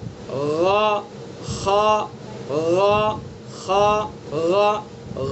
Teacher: خا حلق کے منہ کی طرف سے نکلے گا